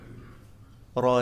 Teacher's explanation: tidak menempel hanya bergetar ujung lidahnya